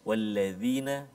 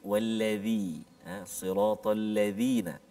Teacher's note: wallazi bila kita sebut tu lidah kita keluar sikit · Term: huruf dzal